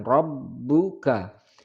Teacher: Kaifa fa'ala, fa'ala rabbuka, ba bertasydid agak sedikit ditekan atau nadanya sedikit dinaikkan